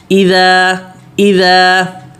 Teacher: ذال یہ نرم ہوتا ہے، دونوں دانتوں کے بیچ میں زبان رکھنی ہے